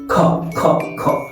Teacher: খ যখন বলবো তখন দেখবে ফুসফুস থেকে একটা বাতাস ঝাটকা লাগবে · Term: মহাপ্রাণ